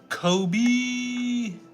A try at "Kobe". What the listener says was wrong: Sound like you said Kobe and Cody at the same time, even though we know. Because you were like, Kobe. So you said Kobe and then B. That's what I heard.